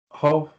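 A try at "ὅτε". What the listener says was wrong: It's smooth breathing.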